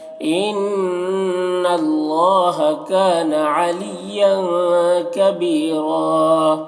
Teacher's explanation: نون مشدد غنہ ہوگا اور اللہ کو پر پڑھیں گے اور اللہ میں کھڑا زبر ہے جو الف مدہ کی طرح ہے.